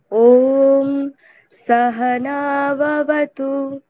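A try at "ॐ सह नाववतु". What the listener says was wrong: ঠিক, ওম সাহানা ওয়াবাতু, ব কিন্তু নেই, ওয়াটা খেয়াল রাখতে হবে। তারপরেও সাহা এক আছে, নৌ। সংস্কৃত উচ্চারণ আরেকটি নিয়ম হচ্ছে, যেখানে দীর্ঘ স্বর থাকবে সেখানে একটু বেশি সময় ধরে উচ্চারণ করতে হবে, যেখানে হ্রস্ব স্বর থাকবে সেখানে কম সময় ধরে।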